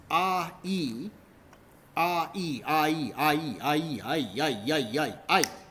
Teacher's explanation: Just becomes A-E if you keep saying it quickly. A-E becomes I if you basically say it quickly enough and don't distinguish between them. So that's how it becomes I over time.